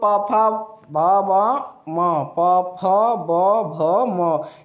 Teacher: व्यंजन वर्ण है जो जिसका उच्चारण स्थान ओट है